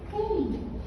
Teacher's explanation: Eu continuo tendo a vogal núcleo E, que agora o som do E está fechado, em vez de E, mas é a mesma vogal. EI. O I, ele é o declive da sílaba, né?